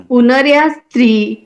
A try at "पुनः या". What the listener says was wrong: पुनर्या नहीं करना है, इसको क्या करना है? पुनः या।